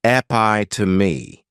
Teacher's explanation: this noun has four syllables and the stress is on that second syllable · This noun has 4 syllables, and the stress is on that second syllable. Epi to me. This is a word that, when you see it, many times people may mispronounce it because the third syllable has that schwa, and the last syllable is that long E.